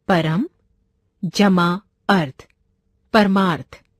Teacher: इस शब्द में परम का अंतिम वर्ण म यानी अ और अर्थ का प्रथम वर्ण अ दोनों ही ओर ह्रस्व स्वर हैं, परंतु दोनों के मेल से दीर्घ आ का निर्माण हुआ है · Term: दीर्घ संधि